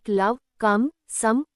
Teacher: o doesn't sound like o. It becomes short a. ఇవి exception stress లేకపోవడం వల్ల ఓ శబ్దం తగ్గి a లా మారుతుంది.